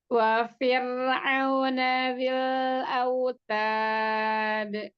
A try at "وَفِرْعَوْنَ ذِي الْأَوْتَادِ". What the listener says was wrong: Ta, dihamaskan lagi huruf taknya.